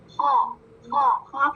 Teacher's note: خو کہاں سے ادا ہوگا؟ ادنی حلق سے، اور اس کی ساؤنڈ کیسی ہوتی ہے؟ موٹی